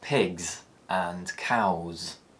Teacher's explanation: When the es suffix follows a voiced consonant or vowel, it produces the z sound.